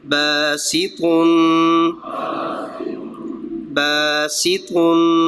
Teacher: طا حروف مستعلیہ میں سے ہے، اس لیے پر پڑھ رہے ہیں